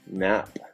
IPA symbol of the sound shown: n